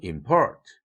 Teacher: 스트레스 액센트를 폴트에 붙이는 동시에 피치 액센트도 임에 비해서 port 이쪽이 더 높아지죠